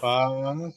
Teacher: উপরের দাঁতের আগাটা নিচের ঠোঁটের প্যাটের সাথে লাগবে